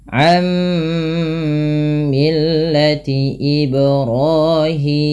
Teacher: Sama ketika kita membaca an millati, tidak lagi dibaca an millati, tapi langsung ke mim dan ditahan suara mimnya karena ia bacaan idgham bi gunnah.